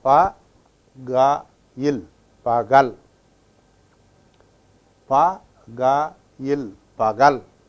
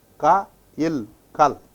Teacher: after another letter, ka takes up the sound of ga. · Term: ga sound